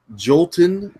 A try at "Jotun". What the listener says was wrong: No, there's no L. It's Jotun.